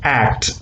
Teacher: For example, k, we know that it's a plosive, but when it comes in act, as I've shown here, act, k cannot be completely released, because before that it has to close again, the air has to be accumulated again for the articulation of the next plosive, that is t. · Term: incomplete plosives